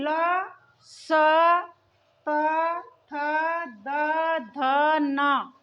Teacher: जिन वर्णों का उच्चारण करते समय जीभ दांतों का स्पर्श करते। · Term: दंत्य वर्ण